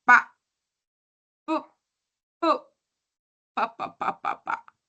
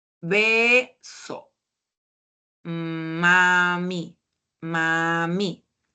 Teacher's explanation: cuando se juntan los labios, estamos originando el sonido de la P, B y M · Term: bilabiales